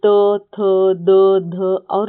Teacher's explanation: उसके बाद जो चौथा वर्ग है वह त वर्ग है जिसे दंत्य कहते हैं। जिन वर्णों का उच्चारण ऊपर के दांतों पर जीभ लगाने से होता है उन्हें दंत्य कहते हैं। जिसमें त, थ, द, ध और न आता है।